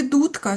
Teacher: скільки б к не боровся з дзвінким д, д залишається звук д